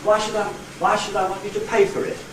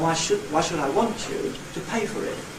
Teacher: One was one intonation pattern, the second was two intonation patterns. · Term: tonality